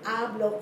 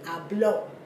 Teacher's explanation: Putting the emphasis on the last syllable changes the word hablo, which means I speak, to habló, which means he spoke.